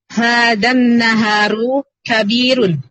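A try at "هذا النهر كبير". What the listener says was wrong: Naharu atau naharu? Salah, bukan naharu. Yang betul Bukan, yang betul nahru. Haknya sukun, Bu. Ha dan nahru.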